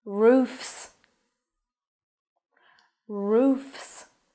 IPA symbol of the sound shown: s